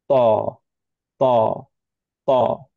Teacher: Back of the tongue elevated, বেশিখানি মুখ open হতে পারবে না, মুখটা রাউন্ড হতে পারবে না। আমরা টাচ করব টাং দিয়ে বেশি পোর্শন, এন্ড হচ্ছে প্রেস করব। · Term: হেভি লেটার